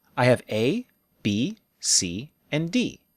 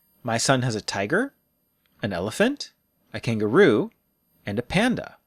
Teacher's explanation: we also use rising intonation for lists we use a pattern of rise rise fall the rising intonation tells our listener hey I'm still talking don't